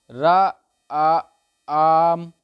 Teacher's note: यदि हम दूर से राम को बुलाने के लिए आवाज़ लगाएंगे तो राम का उच्चारण रा आ आम होगा। इसमें जो रा है हमारा वही प्लुप्त स्वर है।